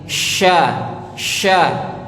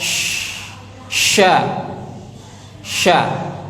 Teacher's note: yang paling lunak ahah itu ditempel di situ ya sya sya Tengah lidahnya tempelin di langit-langit sya sya sampai keluar udaranya banyak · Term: syin